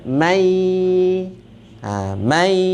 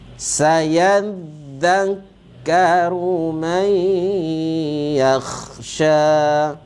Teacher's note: Nun bertemu dengan ya, idgham ma'al gunnah. Bunyinya mai.